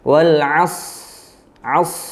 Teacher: Yaitu sifat isti'la dan itbaqnya, atau lidahnya merapat, atau juga isti'la tadi, terangkatnya pangkal lidah, sehingga timbul bunyi atau suara dari huruf shad adalah tebal